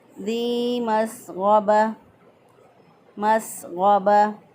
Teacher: या मद्दा है, एक अलिफ के बराबर लंबा किया, इस मद को मद्द असली कहते हैं। · सीन की अदायगी में सीटी की आवाज़ आनी चाहिए। गैन जो है इसको अदना हलक से अदा करेंगे।